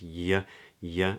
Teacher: it's called a yod, where the tongue is high and then it drops